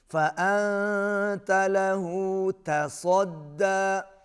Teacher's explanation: تا باریک، صاد موٹا